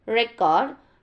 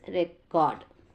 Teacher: the word record is a noun when stressed on the first syllable record and the verb when stressed in the second syllable record next one is morphology it's a study of word formation